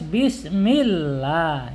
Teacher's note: lam jalalah ketika sebelum lam jalalah berharokat kasroh ya, ini kasroh, maka hukumnya wajib dibaca tipis atau tartik ya, tipis, nggak boleh bismillah, tapi harus bismillah ya, bismillah dibaca tipis.